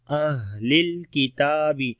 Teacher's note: ہا کے اندر صفت ہمس ہے، سانس کو جاری کریں گے، کمزوری آئے گی، پستی ہو جائے گی سانس کے اندر۔